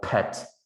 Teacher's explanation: you will hear a burst of air on your palm, on your hand, and that's aspiration